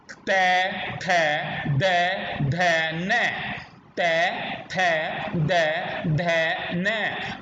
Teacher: हमारी जीभ दांतों के नीचे जा रही है, इसलिए हम इसको कहते हैं दंत, यानी ये हमारा स्थान हो गया, उच्चारण स्थान दंत है।